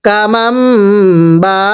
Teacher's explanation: মিম সাকিনটিকে পূর্বের হরফের সাথে মিলিয়ে পড়ব তাহলে কামাম করব বাবা বা এর মধ্যে চার আলিফ টান